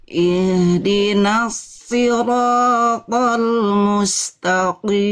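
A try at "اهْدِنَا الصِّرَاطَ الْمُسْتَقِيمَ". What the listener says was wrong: Tebal ya. Bunda pun merasa ya, tinggal kurang tebal sedikit. Angkat lagi pangkal lidah sifat isti'lanya. Ihdinas sirat. Jangan jangan ihdi.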